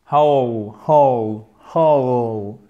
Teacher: Et ici, on a une diphtongue. C'est un double son, AOU, le E qui va sur le OU, AOU, whole, whole, whole.